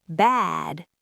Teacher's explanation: Bad has a voiced d, so the vowel's long. Bad. Even if I whisper the end of the word, you know I'm saying bad because you heard the length of the a.